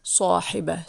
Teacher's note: if there's no vowels on the ta marbuta at the end of the word sahiba, it's going to be like an H basically.